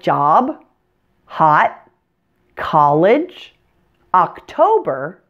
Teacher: words with short o Spelling's in English are pronounced with an AA sound rather than an O sound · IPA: /ɑ/